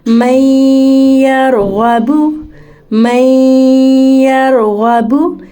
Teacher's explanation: एक और मिसाल है मैं यरग़बु, मैं यरग़बु, नून साकिन है और इसके बाद फिर या आ रहा है, तो यहाँ भी हरूफ यरमलून में से या इदगाम माल गुन्ना करेंगे, यानी नून को मदगम भी करेंगे, गुन्ने की शेप में इसकी आवाज़ बाहर आएगी